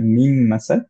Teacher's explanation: আবার যখন হচ্ছে যে মিম আর নুনের গুন্না হচ্ছে, ফর এক্সাম্পল মার্জ হচ্ছে, যেমন হচ্ছে মিন মাসাদ ছিল, এটাকে আমরা পড়বো হচ্ছে মিম মাসাদ, কিন্তু আমরা পড়বো গুন্না সহ, এর জন্য আমরা পড়বো হচ্ছে মিম মাসাদ। তো প্রথম মিম যেটা সুকুনে, সেটাকে আমরা ধরে রাখছি